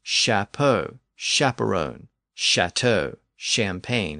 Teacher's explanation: in later French, that CHA or cha sound shifted to an SHA or sha sound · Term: sh sound